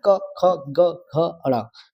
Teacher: का मतलब कंठ। ये कंठ से बोले जाने वाले शब्द है